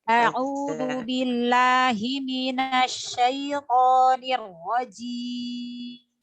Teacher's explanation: mat tobi'inya dipendekin lagi ya Ibu, jangan kepanjangan ya. 1 ayunan nafas.